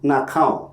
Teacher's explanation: So, the negative prefix becomes na, resulting in na khao. Here, the a sound is copied from the verb to the negative prefix. This shows how the vowel of the verb influences the form of negation.